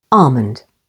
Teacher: with the stress on the first syllable almond · L is also silent before M, as in the words almond, with the stress on the first syllable